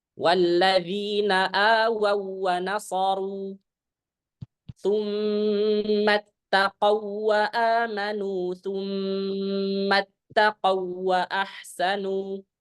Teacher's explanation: Hati-hati di sini. Ketika kita mengidghamkan, maka bacaannya adalah idgham kamil. Ya, bila gunnah. Jangan sampai ditahan.